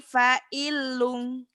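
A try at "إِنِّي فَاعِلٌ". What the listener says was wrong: Bukan fa'ilung, kan dihentikan. Ini fa'il. Fa-nya panjang. Fa-nya matobi'i.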